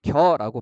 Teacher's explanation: 이중 모음 여는 반모음 이와 단모음 어의 결합으로 되어 있죠.